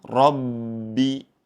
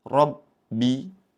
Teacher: Ba bertasydid mempunyai sifat syiddah atau tertahan. Ya, jangan sampai kita saat membacanya ada aliran.